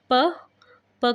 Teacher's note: हमारे दोनों जो होट है वह बंद होते हैं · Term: ओस्ट